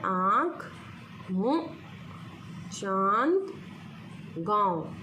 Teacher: अनुनासिक जिसके उच्चारण में हवा नाक और मुख दोनों से ही निकलती है